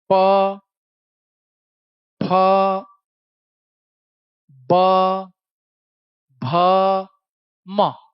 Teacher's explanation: ये दोनों ओठ आपस में चिपक जाएंगे। आप चाहे चाहो या ना चाहो। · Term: ओष्ठव्य